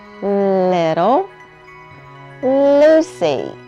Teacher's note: Yes, they are the same, and if you watch my mouth, you can see what my tongue and lips do when I make that sound. My tongue goes up behind my top front teeth.